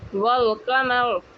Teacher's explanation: حرف قمری جن سے پہلے الف لام آتے ہیں تو اس وقت الف کا تلفظ نہیں ہوتا، البتہ لام کا تلفظ ہوتا ہے